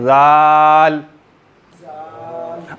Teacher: अगले दोनों दांतों की टिप पर ज़बान बाहर आकर लगेगी , हाँ बाहर आकर लगेगी, ठीक है, जाल। अगर इसमें सख्ती